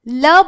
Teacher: ल बोल रहे हो तो आपकी जिह्वा दांतों को स्पर्श कर रही है